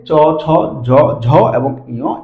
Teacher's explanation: এগুলো হচ্ছে তালব্য থেকে উচ্চারিত হয় অথবা অগ্রতালু বা শক্ত তালু যাই বলি না কেন সেখান থেকে উচ্চারিত হয়